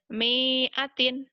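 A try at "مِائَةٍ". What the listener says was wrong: Salah, Mi'atin, nggak ada yang panjang. Mi'atin, mihnya atin, mi'atin.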